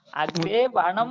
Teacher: ఇక్కడ వనం పొరగా మిశ్రిక అనే సూత్రం 8వ అధ్యాయం 4వ పాదం 4వ సూత్రం మీరు చూడండి. ఆ సూత్రం చేత వన అనే దగ్గర ఉండేటటువంటి దంత్యనకార స్థానంలో మూర్ధన్యాదేశం వస్తుంది. అగ్రే వనం అని అవుతుంది. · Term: మూర్ధన్య నకార ఆదేశం